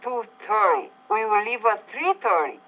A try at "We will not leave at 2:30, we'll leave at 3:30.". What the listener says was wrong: Okay, the emphasis here is not the word 30, but the word 2 or 3. So for the first one, I would say, we will not leave at 2:30, we'll leave at 3:30. So again, we will not leave at 2:30, we'll leave at 3:30.